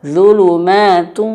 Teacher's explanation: Padahal idgham bi gunnah, idgham masukkan bi gunnah dengan gunnah. Gunnah itu artinya khayshum, masuk hidung. Maka zulumatu, wajib masuk hidung.